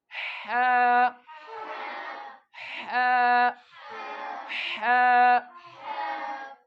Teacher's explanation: अब ये बारीक है बिल्कुल, और ये हलक से, हलक के नीचे वाले किनारे से अदा होता है।